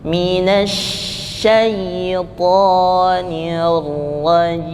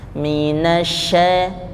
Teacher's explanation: huruf shinnya kalau tidak dihembuskan nanti hilang tasydidnya. Contoh, a'udzu billahi hembuskan, minasyaitonir rajim.